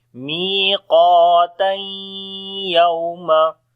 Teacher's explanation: Inna yawmal fasli kana miqata. And if you want to continue, so then we say miqatan yawma. So then it will be idgham with gunna. But right now we are stopping, so we say miqata.